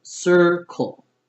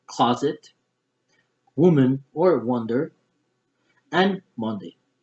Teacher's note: I'm going to stress the first syllable